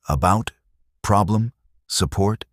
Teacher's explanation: The schwa sound. It is the most common sound in English, and it is never stressed.